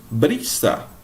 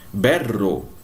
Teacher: a sílaba tônica, pessoal, não vai ser mais a última, vai ser a penúltima. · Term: llanas ou graves